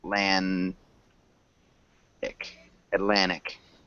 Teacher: It's got that swallowed T sound, so Atlantic.